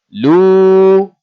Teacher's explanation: Bila kita sebut lu, dia keluar daripada al-jawf. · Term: waw sakinah, mak tabi'i